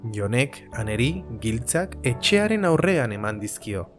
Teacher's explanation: El énfasis está en “etxearen aurrean”.